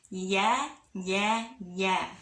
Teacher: Tapi kalau aku bilang ya, naikin lidah tengahnya ke atas langit-langit